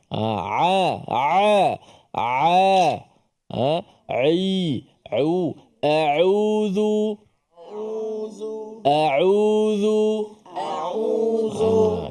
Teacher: huruf Ain yang mana berada pada tengah kerongkong kita